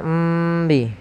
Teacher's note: mim mati bertemu dengan huruf ba maka ini cara membacanya yaitu suara mimnya ditahan jangan langsung dilepas